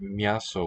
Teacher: it sounds like M is a syllable by itself